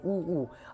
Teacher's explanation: इसका दोनों का उच्चारण स्थान कहां से होगा बाबू? ओष्ठ से होगा